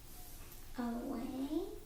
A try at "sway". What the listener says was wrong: No, that's an S. This is an S.